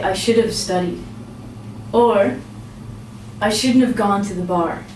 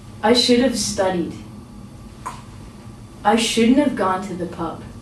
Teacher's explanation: When we pronounce this, we actually don't say the have